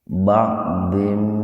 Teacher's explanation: Kasratain ketemu dengan mim. Jadi membacanya dimasukkan, diidghamkan, dimasukkan ke mim dengan mendengung. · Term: idgham bi gunnah